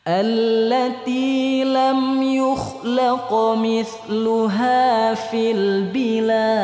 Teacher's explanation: allati lam yukhlaq mithluha fil bilad. Nah, pada nada fly-nya kita coba pakai model yang kedua. Artinya teman-teman, sebelum fly ada tanjakan.